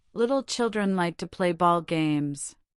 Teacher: This sentence contains both the initial light L and the final dark L, compelling your articulators to adjust automatically.